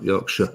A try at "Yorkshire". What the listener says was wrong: It's not sheer. It's not sheer.